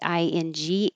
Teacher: the back of your tongue goes very high and touches the top of your mouth for ing. I can change it to an in here.